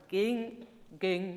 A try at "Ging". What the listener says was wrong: Ging, ging. So make the vowel a bit longer, because now it's ging, gone.